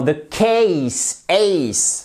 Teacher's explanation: C'est un « et » ici. C'est une diphtongue, c'est un son double et fort, un peu comme le « a » de oseille.